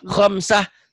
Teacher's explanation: Tak marbuto. Tak marbuto itu taknya berubah menjadi ha.